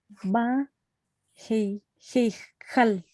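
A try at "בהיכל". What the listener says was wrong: Metsuyan. Perfecto.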